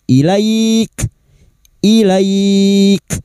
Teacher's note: Huruf kaf yang dibaca wakaf. Maka sifat dari huruf kaf harus terasa. Ya ituu sifat hames dan siddah.